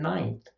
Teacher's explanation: they don't put their tongue on the alveolar ridge to make an N before they go into the interdental fricative. So th has the tongue tip in between the teeth, where we know we've got an N sound coming up.